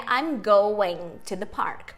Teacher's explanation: Então, uma palavra terminada em ING, no tal do ing, que a gente falava na escola, você não pronuncia esse G no final, na grande maioria dos sotaques da língua inglesa